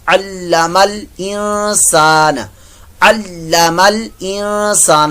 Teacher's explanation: اگر ملا کر پڑھیں بالقلم علم الانسان, علم الانسان, یہاں پھر اخفا کا غنہ, نون ساکن کے بعد سین آ گیا تو یہاں اخفا کا غنہ ہوگا